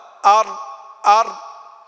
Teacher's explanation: والراء يدانيه لظهر، أدخل يعني داخل، يعني أدخل منه، أدخل من النون قليلا في طرف اللسان. إذن الراء يخرج من طرف اللسان يداني مخرج النون، ولكنه أدخل إلى ظهر اللسان قليلا